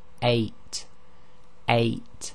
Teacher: and the Hamza represents what is known as the gloal stop it's an Abrupt stopping of the air flow at the bottom of the throat · you'll feel that your bottom of your throat closes very slightly for a very short time and that's actually called the gloal Stop and in Arabic it's